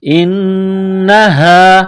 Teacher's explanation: نون مشدد ہے تو آواز ناک میں لے جانا ہے. غنہ کرنا ہے.